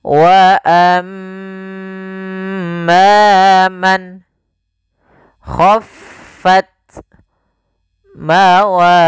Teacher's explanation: Wa amma man khaffat mawazinuh. Kembali lagi ada mim tasydid, bacaan gunnah, yaitu suaranya menahan dulu suara nya sepanjang 2 harokat.